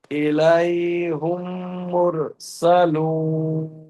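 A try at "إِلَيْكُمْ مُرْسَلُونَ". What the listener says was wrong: জি, ইলাইহুম নয়, আমি বলছি ইলাইকুম মুরসালুনা। মিম সাকিনের পরে জি, মিমকে মিমের সাথে মিলিয়ে একালিফ গুণনা করে পড়তে হবে, ঠিক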